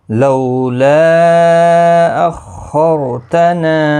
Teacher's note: خا اور را دونوں پر پڑھے جائیں گے